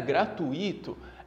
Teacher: a maneira correta de se pronunciar essa palavrinha aqui, né, gratuito, é como se o acento tivesse no U